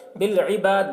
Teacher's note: یہاں پر وقف کریں گے تو دال میں قلقلہ کریں گے